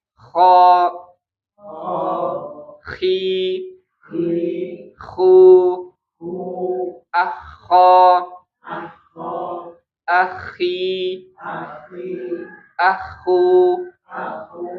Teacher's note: Makhraj huruf K itu di ujung tenggorokan paling atas sekali ya.